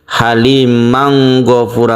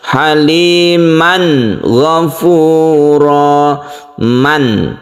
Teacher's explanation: suara tanwinnya itu harus jelas, berbunyi an ya. Haliman berbunyi n, huruf n ya, itu harus jelas dan tidak diikhfakan ya, bukan halimang ghafura, bukan, tapi harus jelas haliman ghafura, man, jadi mannya ini harus jelas.